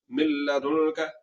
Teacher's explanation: ہم نے صرف اور صرف ادغام کرنا ہے، غنہ نہیں کرنا، آواز کو ناک میں لے جا کر لمبا نہیں کرنا۔ اگر آواز کو ناک میں لے جا کر لمبا کریں گے تو پھر یہ غنہ ہو جائے گا۔